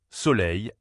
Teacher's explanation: C'est un son sourd. Cela veut dire qu'il ne vibre pas.